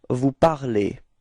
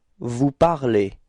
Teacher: for vous, you will get the ending ez, okay? And it's pronounced e